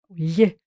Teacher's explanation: aquele som que é escrito ortograficamente com lh né o lhe que os linguistas dizem que é uma palatal lateral